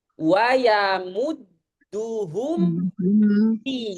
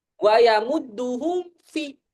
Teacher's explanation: sempurnakan mim sukun dulu dengan merapatkan dua bibir, baru ngebentuk makhraj waw atau ngebentuk makhraj ha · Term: izhar syafawi